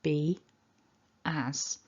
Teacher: we get this really subtle linking y up here between them because we've got those two vowel sounds